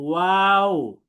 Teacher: ওয়াওয়ের মাখরাজ হচ্ছে দুই ঠোঁট গোল করে মধ্যে ফাঁক রেখে উচ্চারিত হয়। অর্থাৎ আমরা দুইটা ঠোঁটকে গোল করব, এই যে এইভাবে গোল করব এবং মাঝখানে একটা ফাঁক থাকবে, একেবারে মিশিয়ে ফেলবো না, এমন করব না।